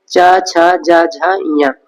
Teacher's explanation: तालु से हम चा वर्ग का उच्चारण करते हैं